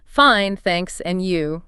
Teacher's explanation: And when someone asks how are you, remember the classic response, fine, thanks. And you with that rising intonation on you, shows you're asking back